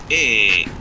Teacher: You can see that this is a close mid, or close is also called high, so it is a high mid vowel